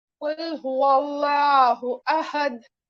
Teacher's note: हमें लफ्ज़े अल्लाह के लाम को मोटा पढ़ना चाहिए, क्योंकि लफ्ज़े अल्लाह से पहले वाव पर जबर है